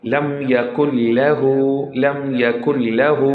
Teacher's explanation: there is coming lam after noon sakin, so it would be idgham bila gunna